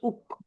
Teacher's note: জিভের গড়া হতে একটু আগে বেরিয়ে তার বরাবর উপরের তালুর সঙ্গে লাগিয়ে উচ্চারিত হয় কাপ।